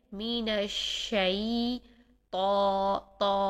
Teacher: تو کو موٹا کرنے کا طریقہ یہ ہے، پیچھے سے زبان کی جڑ اور زبان کا درمیان تالو کے ساتھ لگائیے اور زبان کی نوک سامنے کے دانتوں کی جڑوں سے لگائیے، تو اس طرح سے ہمارا تو موٹا ادا ہوگا۔